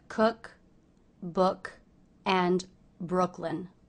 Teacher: the double O here is pronounced as the uh vowel